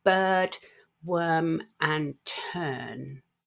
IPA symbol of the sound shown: ɜ: